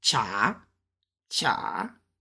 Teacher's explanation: it's going up in a second tone